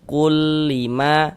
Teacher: jangan dibaca kun tapi qul karena dia masuk ke huruf lam. Qul lima ma dibaca panjang.